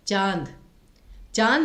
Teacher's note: अनुनासिक होते हैं ना, याद रखिए उनका उच्चारण गले से ज्यादा होता है, नाक से बहुत ही कम। जैसे चांद, चांद में आप देखेंगे गले से अधिक आवाज निकल रही है।